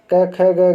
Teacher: क वर्ग का उच्चारण स्थान कंठ होता है